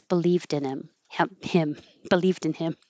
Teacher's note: It's obviously more natural for me to not have the H.